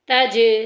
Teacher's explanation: جیم گونج کے نکلے گی، لوٹ کے نکلے گی